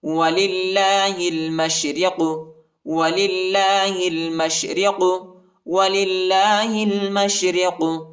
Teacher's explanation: لام کو لام کے ساتھ ملائیں گے، ہا کو لام کے ساتھ ملائیں گے، الف نہیں پڑھا جاتا، الف کے اوپر حرکت نہیں، اور میم کو شن کے ساتھ ملائیں گے۔